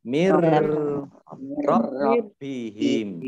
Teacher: nun sukun bertemu dengan ro, idgham bila guna, ya, tidak didengungkan, tapi masuk ke huruf berikutnya mir, ya, mir rabbihim.